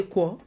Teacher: For the people who don't pronounce ri, they say ekwo.